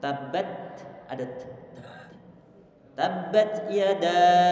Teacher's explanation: Kita alirkan suara setelah kita mensukunkan huruf ta-nya, mengalirkan angin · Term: hamas